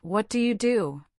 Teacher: The words what and do are stressed.